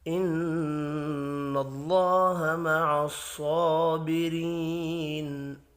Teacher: نون مشدد پر غنہ کریں گے، اللہ کا نام زبر کی وجہ سے پر پڑھا جائے گا۔ صاد حروف مستعلیہ ہے، پر پڑھیں گے۔